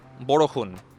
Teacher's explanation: And of course another distinguishing feature of asamese which you can find from this word is this sort of consonant shift. All the sha s sounds that you might find in uh bangla become ha. This sort of distinctly asamese ha sound. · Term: Assamese ha sound